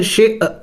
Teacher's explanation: حمزہ کے اوپر سکون ہے، اس کو جھٹکا دے کے پڑھا جائے گا